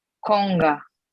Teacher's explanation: Y presta atención a dónde se está pegando la lengua. Atrás en el paladar blando.